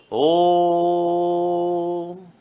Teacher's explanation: लघु स्वरों की तुलना में तिगुना समय लगने के कारण इन्हें प्लुत स्वर कहते हैं। तो ध्यान रखना, ये ऊ नहीं, संख्या का 3 होता है।